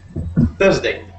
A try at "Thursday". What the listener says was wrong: Cool, perfect.